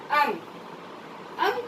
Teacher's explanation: अंग को अनुस्वार कहते हैं, और इसका उच्चारण नाक से होता है, और इसका चिन्ह इस तरह से होता है, बिंदु के समान, यानी बिंदी के समान।